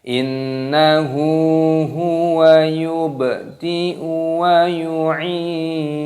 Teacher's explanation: Innahu nun tasdid hukumnya dibaca gunnah berdengung, haknya dibaca panjang. Huwa yubdi'u, baknya berharokat sukun, ini dimatikan, diqalqalah.